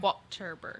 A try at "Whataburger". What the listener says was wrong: Yeah, not emphasizing the T, but it's still, now I know it's not H2O burger.